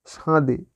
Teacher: নাসিক্যী ভবন অর্থাৎ নাসিক্য ব্যঞ্জন ধ্বনি যেখানে লুপ্ত হয়েছে সেখানে পূর্ববর্তী স্বর অনুনাসিক হয়েছে